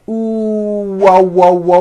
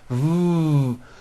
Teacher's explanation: wo W that's how you produce a w w like that it's never a v sound V where you are like biting down on your lower lip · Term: W sound